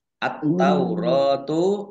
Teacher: alif lam syamsiah karena tidak dibaca langsung masuk ke huruf berikutnya yaitu ta